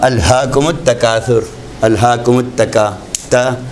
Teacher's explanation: ये ता जो है तरकीक से पढ़ा जाता है